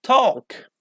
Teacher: so L isn't pronounced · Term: silent L